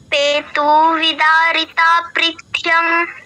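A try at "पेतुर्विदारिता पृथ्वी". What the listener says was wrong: না, পেতুর, ও এর উপর একটা রেফ আছে না, পেতুর্বিদারিতা পৃথ্বং, পৃথ্বীয়ং। পেতুর, তু এর পর ও এর উপর যে রেফটা আছে র আসবে আর কি, পেতুর বিদারিতাফ, পেতুর বিদারিতাফ পৃথ্বীয়ং।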